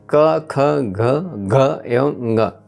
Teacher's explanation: प्रथम पंच व्यंजनों का उच्चारण कंठ से होता है इसलिए उसे कंठ वर्ग के व्यंजन कहते हैं